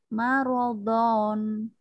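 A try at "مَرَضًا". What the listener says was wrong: Berhenti Aja. Karena ada tanda berhenti kan situ. berhenti, Berhenti aja. Marodo dua harokat.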